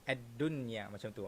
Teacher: Tetapi dalam perkataan ini ad-dunya, satu-satunya perkataan yang apabila nun mati bertemu dengan huruf ya, kita tak payah dengung.